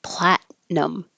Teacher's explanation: you're not going to say the T